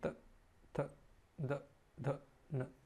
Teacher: ठीक है, इसमें आपको देखने को मिलेगा दंत, यहाँ पर हम दांतों का इस्तेमाल करेंगे। जीभ हमारी दांतों को टच करेगी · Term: दंत व्यंजन